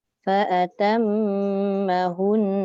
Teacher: Hun tu dia kena dengung juga 2 harakat.